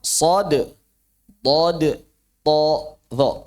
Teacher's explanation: lidah itu naik sampai melekat ke langit-langit dan aliran udara bukan cuma terlempar ke langit-langit tapi terkurung di antara langit-langit dan lidah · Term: huruf itbaq